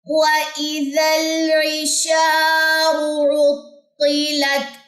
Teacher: اس را کو موٹا پڑھنا ہے